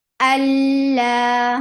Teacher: Hamza is very sharp. For fatha, open your jaws, attached with lam. Lam will be 2 counts long because it is mad letter.